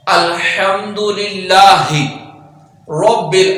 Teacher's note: اب را کو پر پڑھیں گے کیونکہ را کے اوپر زبر ہے